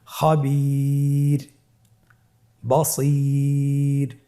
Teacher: ওয়াকফের কারণে রটাকে সাকিন দেওয়া হয়েছে এবং তার পূর্বে ইয়া সাকিন রয়েছে, তাহলে সর্ব অবস্থায় আমরা রকে পাতলা করে পড়ব